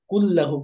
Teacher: নুনকে বাদ দিয়ে পরের হরফের সঙ্গে মিলিয়ে পড়ছি, কুল্লাহু পড়ছি, তাহলে নুনের উচ্চারণ আসছে না, তাহলে নুনকে তা মিলে গেছে, তার মানে এটা ঈদগাম। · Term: গুন্না ছাড়া ঈদগাম